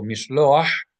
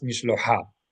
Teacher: But because we have a het here, and het is guttural, then we know that the vowel should be pronounced first and then the guttural letter, not followed by a vowel